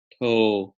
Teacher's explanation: It's just oh. There's no off glide. So not like toe, English word toe, but as if you were to say toe, right?